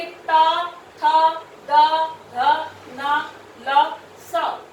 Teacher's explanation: दंतव्य कौन से होते हैं कि जो दांतों से लगते हैं, हमारी जीवा जो है दांतों से लगती है जब भी हम इनको उच्चारित करते हैं। देखिए ट, थ, द, ध, न, ल, स, ठीक है, तो ये कौन से हुए, दंतव्य।